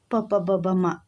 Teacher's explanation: ಸೋ ಅವೆಲ್ಲವೂ ಕೂಡ ಓಷ್ಟದಿಂದ ಉಚ್ಚಾರಣೆ ಮಾಡುವಂತದ್ದು